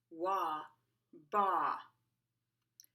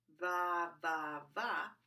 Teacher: V uses the top frontal teeth to bounce off the inner bottom lip. It is voiced. Same position as F, just make sure to activate your voice.